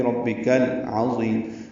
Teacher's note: عین حروف قمری میں سے ہے اور حروف حلقی میں سے بھی ہے، وسط حلق سے ادا ہوگا۔ وا پر پڑھیں گے، ضی یا مدہ ہے اور لمبا کریں گے، اس کو وقفاً مد عارض سکون بنا دیں گے، آخر میں میم ساکن کر دیں گے تو ربک العظیم، اور اس پہ مد عارض سکون بنا کے میم ساکن پہ اظہار ہوگا۔